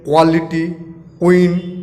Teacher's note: English में क्यू से बनने वाले शब्द का उच्चारण भी उर्दू की तरह कंठ से होता है